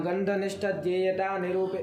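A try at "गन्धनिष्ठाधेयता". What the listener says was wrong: ध्येयता नहीं, आधेयता है। निष्ठ और आगे आधेयता है। अगर जो दीर्घ लगाना है।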